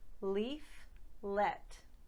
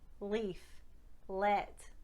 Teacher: The tip of my tongue does not touch my 2 front teeth when I make the Scottish dark L. Where it's touching is the palate of the roof of the mouth just behind, and that's what helps the springboard of the dark L.